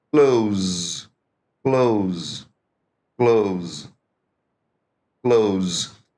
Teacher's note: jeito aí certo só que o s reparou que eu destaquei o s aí do Close ele tem som de z